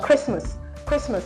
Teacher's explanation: Christmas the T silent we shouldn't say Christ Mass all right this a would give you a schwat sound okay